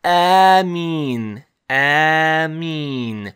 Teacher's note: So we have Ameen, Ameen. So you hear the the hamza at the beginning, and then a long alif, long vowel alif. So that hamza followed by a long vowel alif, that is the mad, and we write it as one letter. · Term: Alif-Madd